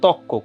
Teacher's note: আধুনিক চলিত বাংলায় অনেক ক্ষেত্রে রকার লোপ পায় এবং পরবর্তী ব্যঞ্জনটা দ্বিত্ব হয়